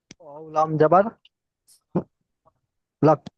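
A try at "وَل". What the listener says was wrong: ওয়াও লাম জবর লাক হয় না, লাম কফ জবর লাক হয়। ওয়াও লাম জবর ওয়াল। ওয়াও জবর ও। হ্যাঁ, ওয়াও জবর ও হয়। আর ওয়ার সাথে যদি লাম যুক্ত হয়, ওয়াল। কফ।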